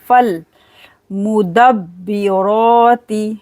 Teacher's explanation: با پر قلقلہ کریں گے فالمدبرات. فا کو لام کے ساتھ ملائیں گے، بیچ میں الف کو نہیں پڑھیں گے